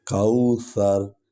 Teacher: سا کو جو ہے نرم انداز میں ہم بولتے ہیں، تھوڑا سا یہ زبان کی نوک اگلے دانتوں کے ساتھ ٹکراتی ہے، کوثر، لیکن وہ زور نہیں، شدت نہیں ہوتی، نرم انداز سے۔